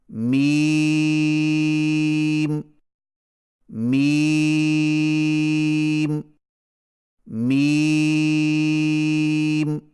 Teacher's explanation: میم کی ادائیگی میں ہونٹوں کے خشک حصے کو قدر نرمی سے ملا کر باریک آواز میں پڑھیں